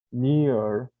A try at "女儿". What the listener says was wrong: Nya 3, jadi turun dulu ya. Itu kayaknya nya dibaca nada 2 soalnya. Yes, 女儿 ya, nya turun baru nyambung sampingnya gitu ya.